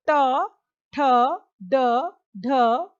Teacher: मूर्धन्य, यानी कठोर तालु के अगले भाग से